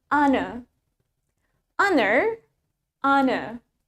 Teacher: Jadi, R-nya nggak kedengeran